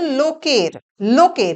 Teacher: এখানে ধাক্কাটা পড়ছে বা শাষাঘাতটা পড়ছে লো এর উপর · ধাক্কাটা পড়ছে বা শ্বাসাঘাতটা পড়ছে লোয়ের ওপর, লোকের। তার ফলে কি হলো, এই যে কয়ে একার ছিল, এটা লুপ্ত হয়ে গেল, দিয়ে হয়ে গেল লোকার, কয়ে কয়ে হয়ে গেল, ব্যঞ্জন দ্বিত্ব।